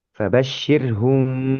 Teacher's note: Jadi agak lama memang huruf mim sukun bertemu ba ini.